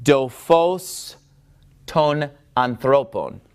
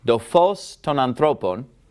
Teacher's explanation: when toph comes after ni, it doesn't make a T sound, it makes a D sound. And look what we have right here, a ni.